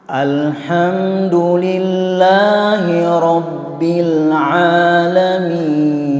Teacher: A dari tenggorokan yang terjauh.